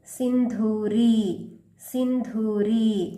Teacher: ಇಲ್ಲಿ ಸಿದ ಮುಂದೆ ಒಂದು ಬಿಂದು ಇಲ್ಲಿ ಕೂಡ ಅಂ ಪ್ರೊನೌನ್ಸ್ ಮಾಡಬೇಕು ಅನುಸ್ವಾರ ಇಲ್ಲಿ ಮಹಾಪ್ರಾಣ ಧೂ ರಿ ಮುಂದೆ ದೀರ್ಘ ದೀರ್ಘಕಾರವಾಗಿ ಪ್ರೊನೌನ್ಸ್ ಮಾಡಬೇಕು